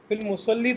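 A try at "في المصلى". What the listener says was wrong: ye film musalla ye alif maksura isko kehte hain asaan lafzon mein jis ya ke sath nukte nahi lage hote usko hum nahi padhte alif ki awaaz nikalte hain film musalla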